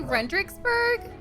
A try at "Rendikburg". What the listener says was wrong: Rendikburg. Rendikburg. No dicks.